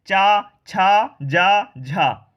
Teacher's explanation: जो हमारी जीभ है वो ऊपरी वाले, ऊपर का जो छत है जीभ का वो पीछे वाले भाग को टच कर रही है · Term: तालव्य